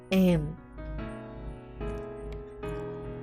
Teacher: To produce the sound M, close your lips tightly. Let the air come out through the nose. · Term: nasal